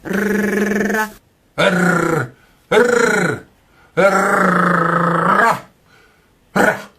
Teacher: en portant le bout de la langue jusqu'au haut du palais, de sorte qu'étant frôlée par l'air qui sort avec force, elle lui cède et revient toujours au même endroit, faisant une manière de tremblement.